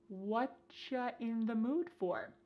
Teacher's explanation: Here the word you has been reduced to cha.